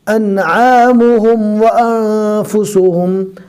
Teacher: پہلے حمزہ پڑھنا ہے نارمل، پھر اس کے بعد عین کو حلق سے ادا کرنا ہے